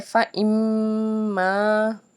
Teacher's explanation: میم ہے مشدد تشدید کے ساتھ تو ہم نے یہاں پہ غنہ کیا